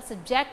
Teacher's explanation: When the stress falls on the first syllable, sub, it is the noun, subject. When the stress falls on the second syllable, ject, subject, it is the verb.